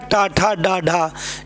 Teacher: टा ठा डा ढा ये हमारे हैं, तो टा वर्ग हमारा मूर्धा होता है